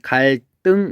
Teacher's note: 리을 뒤에서 이 디귿이 쌍디귿으로 바뀐 거죠. 그래서 발음이 갈등 이렇게 되는 거고, 그 다음에 또 뭐가 있었냐, 앞에서 실수가 있었어.